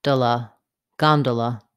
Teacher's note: Letter O says vowel ah, gone. The next two syllables have vowel schwa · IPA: /ˈgɑndələ/